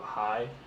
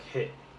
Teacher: As you can see in a closed syllable, we added a T, which is a consonant, and it shortens the vowel sound. So instead of hi, it's like hit.